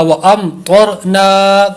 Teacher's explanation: وامطرنا، اظہار شفوی ہے، غنہ نہیں ہوگا